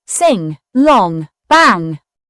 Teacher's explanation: The NG sound is a nasal sound found in words like ring or song. It's made by the back of the tongue touching the soft pallet with air flowing through the nose.